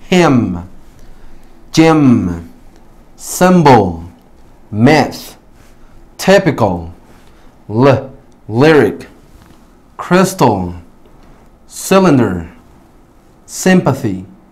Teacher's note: la Y en cada una de estas palabras tiene un short E sound